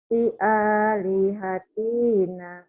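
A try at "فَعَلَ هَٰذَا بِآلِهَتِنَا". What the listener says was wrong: I-nya pendek.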